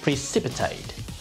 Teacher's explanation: this word is stressed on the second syllable, precipitate